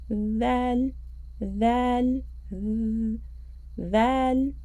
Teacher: The tip of our tongue will touch the edges of our top two front teeth. So our tongue will come out slightly.